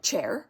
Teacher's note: the ch is actually a combination of a t and a sh